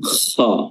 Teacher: huruf kha makhrajnya adalah adanal halq, tenggorokan bagian atas. Kha itu digetarkan